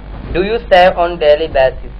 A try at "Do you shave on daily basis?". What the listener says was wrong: डू यू शेव? आपने सेव बोला, आपका उच्चारण डू यू शेव ऑन डेली बेसिस?